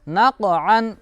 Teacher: नक़अन, क़ाफ इसमें हुरूफ कलकला में से, इसलिए इस पर कलकला हो रहा है। नून क़ाफ ज़बर नक़, आइन दो ज़बर अन, नक़अन।